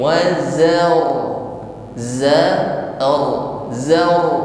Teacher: Zar, suaranya tebal. Hal pertama adalah mengucapkan ra ini dengan atribut takrir. Getaran pada ujung lidah. · Taraful irti'adu taraful lisan, harus ada getaran di ujung lidah. Yang kedua getarannya tafkhim, tebal. Jangan sampai mengucapkan ra getarannya hilang. Wazal hanya tebal tapi takrir atau getarannya hilang.